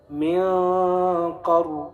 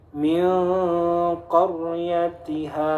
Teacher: Nah, ra-nya tebal. Karena apa? Ra-nya mati sebelumnya fathah. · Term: tafkhim